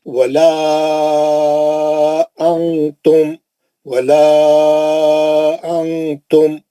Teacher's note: وہ لا جو مد اصلی کے 2 حرکت تھے اس کو کھینچ کے 4 کر دیں گے ہم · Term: مد منفصل